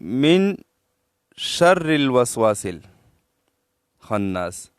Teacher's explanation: तो मिन में खफा नहीं करते हैं नक तक आवाज नहीं ले जाते हैं